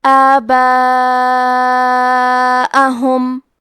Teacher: اس مد میں ہم اپنی آواز 4 مد کے برابر لمبی کریں گے. حمزہ پہ زبر ہے اور ہا پہ پیش ہے تو ہمیں یہ دونوں حرکات کو ظاہر کرنا ہے.